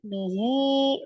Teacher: Mad sila sughra dibaca dua harakat.